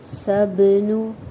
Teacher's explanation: سا کو سین میں سیٹی لائیں گے، با پہ قلقلہ ہو رہا ہے